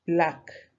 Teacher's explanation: there are two consonants they come together without the appearance of any vowel in between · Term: consonant clusters